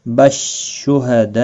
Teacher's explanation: मद्दे मुत्सिल है, 4 अलिफ के बराबर खींच कर पढ़ेंगे